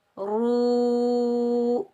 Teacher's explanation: रा को हम वाव साकिन के साथ मिलाएंगे। एक अलिफ की मिकदार खींच कर अदा करेंगे क्योंकि ये वाव मद्दा है